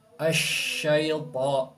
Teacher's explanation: ketika mengucapkan huruf shin itu disertai dengan angin yang menyebar di dalam mulut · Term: sifat tafashi